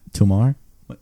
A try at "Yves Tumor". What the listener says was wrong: It's an O.